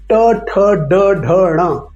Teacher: मूर्धन्य, जिह्वा के ऊपरी मोड़ से